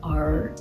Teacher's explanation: The English R is really kind of in the back of your throat, like R. While in Japanese, it's kind of a mix of a rolling R in for example, Dutch, like R, and a L.